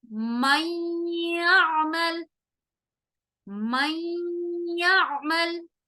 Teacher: نون کو میں ناک میں غنہ کر رہی ہوں